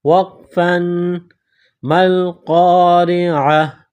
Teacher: جب قرآن پاک میں اس لفظ پر رکیں گے، سٹاپ کریں گے تو گول تا کو ہا سے تبدیل کریں گے